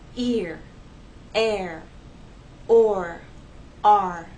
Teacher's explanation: You actually have two vowel sounds that are gliding and blending into each other to make one vowel sound. These words are one syllable.